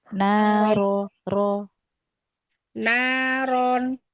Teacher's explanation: Tebalkan lagi ro-nya. Naikkan pangkal lisan.